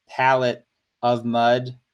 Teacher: the pal is stressed and the mud is stressed, but the et and the of are not stressed